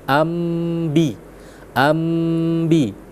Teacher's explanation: memang di atasnya ada mim kecil karena Eh kalau bahasa sederhananya ketika fathatain ya masuk ke dalam huruf ba seakan-akan ada mim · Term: hukum iqlab